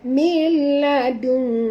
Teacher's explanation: Kita kena sorokkan bunyi nun ini ke dalam kaf, ya, disertai dengan dengung. Sebab itu bunyinya dung, ya.